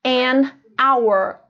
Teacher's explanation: tem uma consoante mas o que que acontece ela não é pronunciada ela some na pronúncia